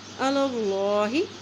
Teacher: اللہ کے نام سے پہلے زبر ہے تو اللہ کا نام موٹا پڑھا جائے گا